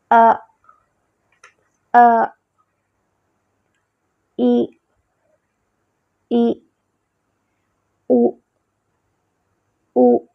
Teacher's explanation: حمزہ جو ہے وہ جھٹکے کے ساتھ پڑھا جاتا ہے